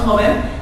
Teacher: a ten a las graves las graves también llamadas Llanas dice lleva el acento en la penúltima sílaba